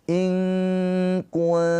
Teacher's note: Ikhfa hakiki nunnya ditahan dua harakat dengan samar. Intum nun sukun bertemu dengan huruf ta juga ikhfa hakiki. · Fatluha in kuntum, nun sukun bertemu dengan kaf. Ikhfa hakiki, nunnya ditahan 2 harokat dengan samar.